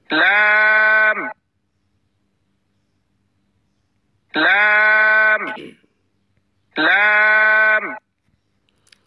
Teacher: যে কোন এক দিকের কিনারা উপরের মাড়ির দাঁতের গোড়ার সঙ্গে লাগাইয়া জিহ্বার আগার কিনারা সামনের উপরের দাঁতের মাড়ির সঙ্গে লাগাইয়া লাম লাম লাম জিহ্বার আঘাত তার বরাবর উপরে তালুর সঙ্গে লাগাইয়া